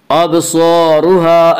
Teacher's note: یا را کے اوپر زبر اس لیے را کو پر پڑھیں گے۔ ابصارها الف مدہ الف ہمیشہ مدہ ہوتا ہے، الف سے پہلے زبر ہوتا ہے، الف مدہ کو ایک الف کے برابر کھینچ کر پڑھیں گے۔